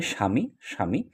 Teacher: এখানে দন্তস তালব্যস হয়ে গিয়েছে। দীর্ঘইকার রসকার হয়ে গিয়েছে।